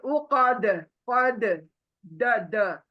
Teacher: दाल को साकिन बनते साथ ही दाल कलकला बन जाएगा उसको जबरदस्ती से पढ़ना है।